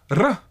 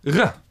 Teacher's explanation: the Hebrew alveolar trill, R, realized phonetically in Israeli as a lax uvular approximant